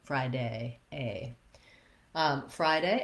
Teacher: So we're long on fry, and then we're shorter on day. But day also has a diphthong, so you want to make sure that you're not shortening that A diphthong to just A, but rather you're closing and relaxing.